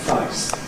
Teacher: that’s the [eɪ] vowel, in London it becomes [ʌɪ]. So rather than [feɪs], you have [fʌɪs].